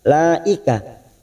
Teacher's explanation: ini kita panjangkan 4 harokat mad wajib mutasil.